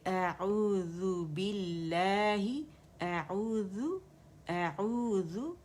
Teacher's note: حمزہ جو ہے یہ ہمارا فار تھروٹ سے نکلے گا